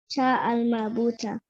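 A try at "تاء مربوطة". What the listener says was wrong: Good, well done.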